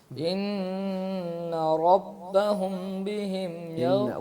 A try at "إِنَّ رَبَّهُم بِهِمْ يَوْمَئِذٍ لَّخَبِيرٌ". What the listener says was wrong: غنہ کو پورا کرو. خبیر.